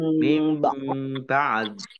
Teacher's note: Nun sukun bertemu dengan huruf ba, bacaan iklab juga. Ya. Baknya dibaca mim terlebih dahulu, ditandai ada mim kecil berdiri.